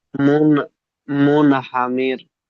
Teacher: র সাকিনের পূর্বে জের আছে, এখানে রকে বারিক পড়তে হবে